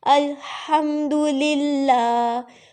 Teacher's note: ہا آ گیا تو اس کو حلق سے ادا کریں گی آپ